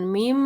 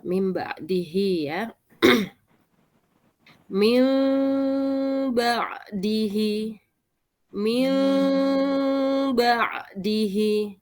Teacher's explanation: Bibirnya tertutup tapi tidak melekat erat ya, tidak menutup rapat ya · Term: iklab